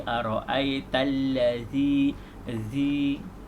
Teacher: ujung lidah berada di antara gigi depan, di tengah-tengah ataupun di antara gigi depan, atas dan bawah